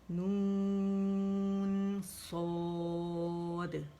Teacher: دیکھیں جہاں میں نے نون کی آواز ختم کی تھی نون ساکن پہ, پھر ختم ہوتے ہی میں صاد کے مخرج پہ چلی گئی اور موٹا لیٹر میں نے ادا کیا